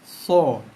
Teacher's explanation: Gigi bawah. Hujung lidah sentuh belakang gigi bawah. Okey. Pangkal lidah kita naikkan sikit. Tekan lepas untuk hasilkan bunyi so.